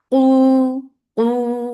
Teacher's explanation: Qu for the circle your lips, and when the long vowel will be pronounced, the sound should not go into your nose.